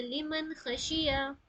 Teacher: ख भी क्या है? हरूफ हल्की में से है। तो जब भी हरूफ हल्की आएगी तो जाहिर करेंगे।